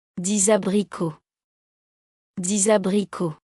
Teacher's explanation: 9. Before a vowel, use liaison, X becomes Z.